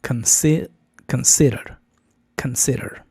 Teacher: Debe de ser con schwa, con, en lugar de con, consider, consider. La primera sílaba es débil, o sea, es una schwa, no una con española fuerte, y el acento cae en sid